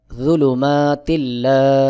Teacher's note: জের তিল, এখানে তার নিচেই দুই জের রয়েছে, দুই জের তানউইন, তানউইনের পরে লাম ইদগামে বে গুন্নার হরফ, এখানে গুন্নাহ ছাড়া মিলাই পড়তে হবে , অর্থাৎ তার নিচে দুই জের এক জের উচ্চারণ করে লামকে